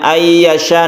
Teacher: Idgham artinya nunnya masuk ke huruf ya sehingga tidak dibaca nunnya, meskipun ada tulisannya tapi tidak dibaca karena sudah masuk ke ya, sehingga ya ini ada tasydidnya. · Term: idgham bi gunna